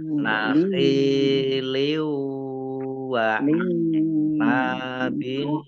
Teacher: Idgham bi gunah masuk dengan mendengung, yaitu mendengung wawu, wawunya ditandai dengan ada tasdidnya.